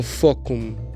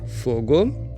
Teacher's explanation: E então nós temos as plosivas, e elas funcionam, como eu expliquei nesse vídeo aqui, da mesma forma que o português, na evolução. Então, as surdas do latim viraram vozeadas, viraram sonoras